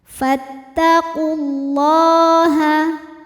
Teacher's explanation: Lam jalalah dibunyikan secara tafkhim karena didahului harokat dhammah. Cara bacanya adalah ditebalkan.